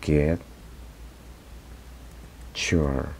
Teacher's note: when we have the word get, y viene el pronombre you o, en este caso, your, la pronunciación de la T cambia como si fuese una Ch.